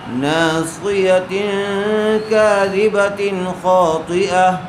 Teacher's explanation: تنوین کے بعد حروف حلقی میں سے خا آیا ہوا ہے، اس لیے بغیر غنے کے جلد اظہار کر کے پڑھیں گے۔